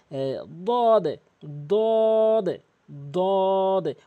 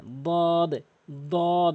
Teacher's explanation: জিব্বার গোড়ার কিনারাটা তার উপরে মারির সঙ্গে লাগাতে হবে